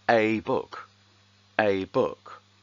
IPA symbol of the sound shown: ai